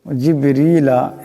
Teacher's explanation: বা সাকিন বা কলকালার হরফ আওয়াজটা একটা ঝটটা খাবে